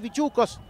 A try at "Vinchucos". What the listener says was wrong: Está costando pronunciar, ¿eh? No, es Bichucos, es Bin, la N, la N.